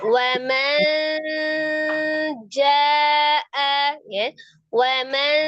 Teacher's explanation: Jadi dari ujung lidah yang ketemu dengan gusi atas agak ke bawah, ujung lidahnya lepas, kemudian tengah lidahnya mengarah ke langit-langit tengah. Ya. Jadi antara n dengan eng tengah-tengah. · Jadi bukan wamanja, juga bukan wamangja. Jadi tengah-tengah antara waman dengan wamang. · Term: nun sukunnya